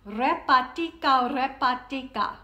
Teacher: And I used a little rolled R because it uses up some extra breath.